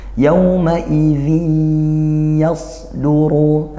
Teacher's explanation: Nah ini tanwin bertemu ya, dibaca idgham bi gunnah, dibaca masuk langsung ke ya-nya tanpa ada bunyi nunnya